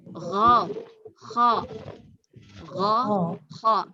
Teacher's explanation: Makhrajnya sama-sama keluar dari tenggorokan paling atas. Sini. Sama keluar di sini.